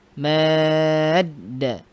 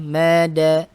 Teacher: Bacaan mad yang bertemu dengan huruf bertasydid, maka cara membacanya adalah dengan dipanjangkan sepanjang 6 harokat